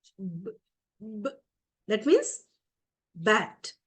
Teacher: B is a voiced sound. You get some vibration.